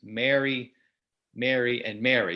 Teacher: So M-A-R-Y, the name, M-A-R-R-Y, like to marry someone, and M-E-R-R-Y, like have a Merry Christmas. In my accent, and I think many Americans, I pronounce them basically the same way. But different accents, there are some accents that pronounce two of them the same way, but one of them differently. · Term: vowel mergers